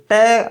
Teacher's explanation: ट बोलते वक्त जब आपकी जीभ लगती है वो तालु से थोड़ी आगे की जगह है, उसको बोला जाता है मूर्धा